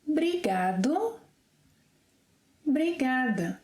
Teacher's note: Obrigado, obrigada can become brigado, brigada. Yeah, so we often drop this initial O when we want to sound a little more informal